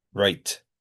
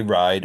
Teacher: I raise the vowel when I say write. I don't say right.